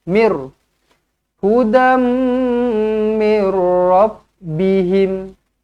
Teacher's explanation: apabila Nun kosong ataupun tanwin bertemu dengan ro ataupun lam sabdu kita tak payah dengung kita masuk sahaja Mir so dekat sini dia jadi m r Mir hudambihim boleh